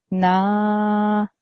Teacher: the noon sound will be prolonged for 2 seconds. That means instead of saying a quick na, I will say na. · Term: alif madda